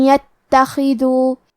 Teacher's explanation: کلمت ان کے آخری میں نون ساکن ہے، پھر حرف لیا ہے کلمت یتخذو، کیونکہ یہاں حکم ہے ادغام بغنہ تو ہم یہ حکم کو غنہ اور تشدید کے ساتھ ادا کریں گے۔ ان یتخذو، کلمت یتخذو میں حرف تا کو تشدید سے پڑھیں گے اور حرف الخا کو بھاری آواز میں پڑھیں گے